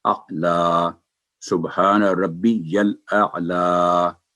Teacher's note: लाम पर खड़ी जबर है, वो 2 सेकंड लंबी करेंगे